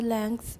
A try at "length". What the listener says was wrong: Put a K in there. Put a K in there. I want to hear the K. Some native speakers do say length, though.